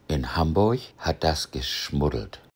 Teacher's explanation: Das ist sowohl norddeutsches Hochdeutsch als auch Missings. Hier hörst du, wie im Norden ein kurzer Vokal vor einem weichen Konsonanten etwas gedehnt wird.